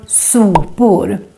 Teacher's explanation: Here the first O gets long because we're just one consonant coming after it.